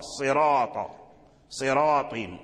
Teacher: لم يقرأ أحد من القراء بترقيق الراء، يعني لم يقرأ راء، قرأ راء، راء، صراط، صراط، الصراط، يعني الصراط تفخيم الراء، يعني لا يقرأ الإنسان صراط، صراط، لا، هذا لحن. الصراط يفخم الراء، يفخمه معنى يفخمه، يغلظ، يغلظ الراء